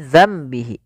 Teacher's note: Yaitu suara nunnya kita ganti dan dibalikkan menjadi suara mim. Awalnya bihi menjadi dzambihi karena di sini ditandai dengan mim warna kecil berwarna hijau. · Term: iqlab